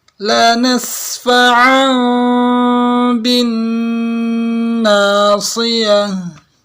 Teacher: Ini tanwin bertemu ba itu samar ya, dengungannya itu di jarak satu lembar kertas, tidak ditempel.